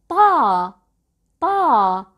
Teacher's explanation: when we pronounce ta, we lift the back of our tongues.